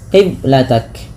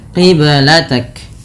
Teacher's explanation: Qibalatak ada bacaan qalqalah pada lafal huruf ba yang disukunkan. Ba sukun merupakan salah satu bacaan qalqalah yang di mana harus memantul. Kesalahan yang terjadi dalam membaca qalqalah yaitu tidak memantulkannya.